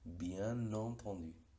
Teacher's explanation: lo mismo con bien, la N, que en otro contexto no suena por la nasalización, con la liaison aparece su sonido de N.